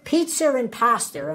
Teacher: if a word ends with a vowel and the following word begins with a vowel we add an extra R sound in between those two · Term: intrusive R